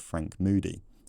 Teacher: he had an extremely fronted goose vowel , and I'd misheard the stop sounds because it was so